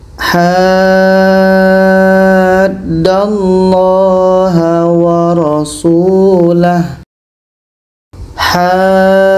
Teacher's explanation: jadi kita panjangkan Ha ini enam harakat baru masuk ke huruf yang ada tasydid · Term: mad lazim kilmi